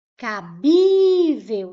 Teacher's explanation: Agora, se eu colocar aqui, ó, cabível, cabível, vou separar em sílabas, cabível. Qual é a sílaba mais forte? O bi. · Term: sílaba tônica